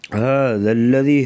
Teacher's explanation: ہا کو گلے سے ادا کریں گے واضح طور پہ